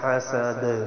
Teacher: دال حروف قلقلہ میں سے ساکن ہو جائے گا، یہاں قلقلہ کرنا ہے